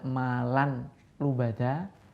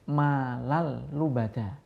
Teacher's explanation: Cara membacanya tidak berdengung. Nun sukun langsung dimasukkan ke dalam huruf lam atau ro, sehingga seperti huruf yang ditasdidi. · Jadi tidak malan lubada, tapi langsung malal lubada. Tanwin langsung dimasukkan huruf lam. Jadi seakan-akan lamnya itu bertasdid. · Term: idgham bila gunnah